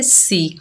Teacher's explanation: सीन के नीचे जेर, बगैर खींचे पढ़ेंगे सी। सीन जो है सख्ती और सीटी वाला हरूफ है